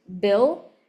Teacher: there's a very small just millisecond kind of prevoicing that my mouth does before I even utter the word